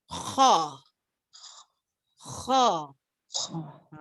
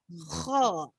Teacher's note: letak dekat tekak. Sebut kha. Rasa tak tempat yang bergegar tu? Kha. Kalau tak gegar tu maksudnya tak makhraj tu tak tepat lah tu. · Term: jauf